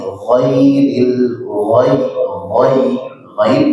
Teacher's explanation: Ghain ini adalah huruf yang pertama tebal ya, dia huruf isti'ala, musta'la, huruf yang sedikit tebal dan dia mengalir suaranya